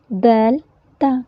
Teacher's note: زبان کی نوک جب ثنایا اولیہ کی جڑ سے لگے تو یہ حروف ادا ہوتے ہیں